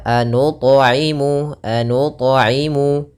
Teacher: Nah maka kita namakan dengan Mad Jaiz munfasil kemudian anu thimu thnya berharakat sukun maka ini kita baca dengan bacaan qolqalah thnya memantul